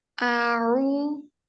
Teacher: 2 हरकत के बराबर लंबा करेंगे · और हमजा हलक के निचले हिस्से से अदा होगा। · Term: वाव मद्दा